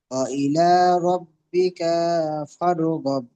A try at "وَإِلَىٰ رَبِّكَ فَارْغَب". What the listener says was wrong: রব্বিকা, কাফটা টান হয়ে যাচ্ছে। ওয়াইলে, লামটা টান দেন।